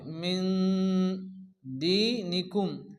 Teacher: দাল আসছে, এক আলিফ গুণনা হবে। মিন দীনিকুম, দাল ইয়াজের দি এর মধ্যে এক আলিফ টান।